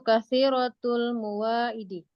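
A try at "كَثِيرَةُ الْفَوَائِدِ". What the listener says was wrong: Bukan mu, ini fa.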